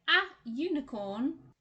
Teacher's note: unicorn starts with a u sound not an uh sound or an ooh sound it doesn't start with a vowel sound so we don't use an but then we do say something